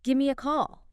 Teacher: And it notes that give me is very frequently reduced down to gimme. It says something like, it's not overpronounced, but gimme.